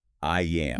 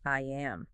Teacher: The tongue is high in the mouth for the E sound at the end of I, and as it drops down to make the A in am, that downward slide while the vocal chords are vibrating produces the Y sound. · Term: intrusive sounds